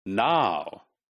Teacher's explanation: which starts with aa right and ends with o in words like now all right so these are English diphthongs